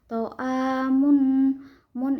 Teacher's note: To'a mun ishar halki karena ada tatwin domah bertemu dengan hamzah. Cara baca tanwinnya dibaca secara jelas